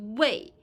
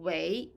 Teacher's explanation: Because 为 here function as a verb, so the pronunciation is not fourth tone, it's not 为. It is second tone, 为.